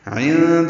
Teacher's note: عند میں نون ساکن کے بعد دال آنے کی وجہ سے اخفا ہے. عین وسط حلق سے ادا کریں گے اور نون پہ آواز کو چھپائیں گے